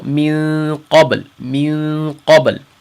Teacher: we didn't touch the top of our mouths when we said min qabl, min qabl. But there is one thing that we should try to know, is that whenever we do an ikhfa, that depending on the next letter, that dictates the kind of ikhfa we're going to make.